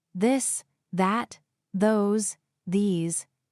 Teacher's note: let your tongue touch your teeth lightly but use your voice.